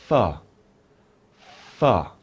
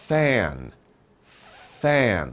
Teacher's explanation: With F, we put our teeth on our bottom lip